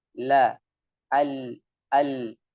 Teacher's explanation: Ketika mengucapkan huruf lam, la, al. Jadi suara mengalir melalui sisi lidah kanan dan kiri. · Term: inhiraf